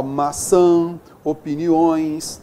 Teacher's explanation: É a forma de nós nasalizarmos as vogais A e O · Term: nasalização